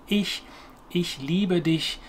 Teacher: there's a soft ch sound which comes more whispery from the front of the mouth